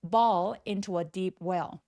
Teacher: 턱 엄청 길게 우리말에 어 소리와 같이 어 어 어 이렇게 내 주세요